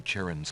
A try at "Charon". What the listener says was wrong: By the way, it's pronounced Charon. It's a C-H-A-R-O-N, but it's pronounced with a hard K.